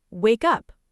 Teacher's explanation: The K from wake jumps on to up.